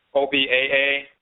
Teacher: the first a is high the second a is low